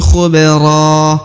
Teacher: Huruf ba berharokat sukun, maka harus dibaca pantul karena dia adalah salah satu daripada huruf-huruf pantul atau huruf-huruf qalqalah.